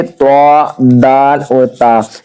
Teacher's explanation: जुबान की नोक और ऊपर के दांतों की जड़ से अदा होते हैं · زبان کی نوک اور اوپر کے دانتوں کی جڑ سے ادا ہوتے ہیں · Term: حروف نطعیہ